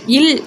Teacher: நுனி வந்து வருதல்னால பிறக்குது ர் இல் ஓகேவா அடுத்து இந்த இல் அப்படிங்கறது நம்முடைய மேல்வாய் பல்லின் அடியை நம்ம நாக்குடைய ஓரம் வந்து தடித்து நெருங்குவதல்னால பிறக்குது